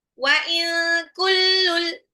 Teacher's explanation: nun sukun ketemu kaf ikfa ya, nunnya disamarkan dan ditahan 2-3 harokat ya, cenderung ke eng kalau ketemu sama kaf